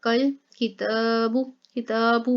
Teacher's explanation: काफ को अगले लाम के साथ मिला के पढ़ेंगे। कल किताबु, किताबु में भी ता के ऊपर खड़ा ज़बर था इसलिए सिर्फ ता को लंबा किया है।